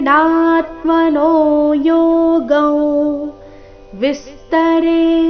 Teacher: ವಿಸ್ತರೆ ವಿ ಮೇಲೆ ಆಘಾತ